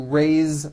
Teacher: Now this word is a bit unusual because even though it is spelled with an S, it's pronounced with a voiced Z. Raise. So we say I raise with a voiced Z ending, and he raises raises.